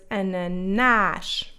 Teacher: It can also be closed and more rounded like what we see in the first A of the word ananás.